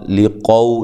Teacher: لی قو لام کو باریک، قو قاف کو موٹا